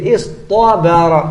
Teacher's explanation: Karena sebelum taknya huruf isti'la shad. Jadi untuk menyesuaikan dengan shad, ganti taknya dengan to.